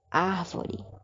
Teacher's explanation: A minha sílaba tônica, a sílaba forte seria ar.